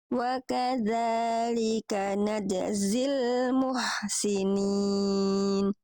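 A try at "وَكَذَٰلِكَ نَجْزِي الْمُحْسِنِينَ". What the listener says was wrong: Oke, jimnya diringankan lagi. Najzi wa kadzalika najzil muhsinin.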